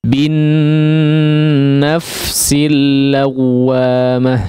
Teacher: Wa la uqsimu bi wala uqsimu bin, di sini ditekan ya, nun yang bertasydid maka ditekan atau digunnahkan dengan gunnah yang panjang